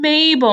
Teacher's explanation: in m like in mabel my lips are pushed together